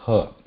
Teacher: Ha is kantha again, because ha is open. When we say ha, there is a slight contraction here at the back, something like ka, but it's not complete blockage